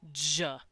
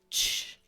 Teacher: j from judge is just a voiced ch, as in church.